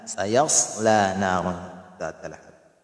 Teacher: ang ya ay ang kanyang makhraj ay sa kalagitnaan ng ating dila kasama ang matigas na gilagid.